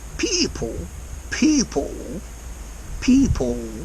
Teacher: he's extending this L and also the e sound in people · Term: dark out